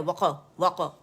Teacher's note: अच्छा, वक्फ़ के जो स्पेलिंग है WAQF वक्फ़, ठीक है. लेकिन जो अरबी में वाव है, काफ पे सुकून है, तो वहाँ पे कलकल है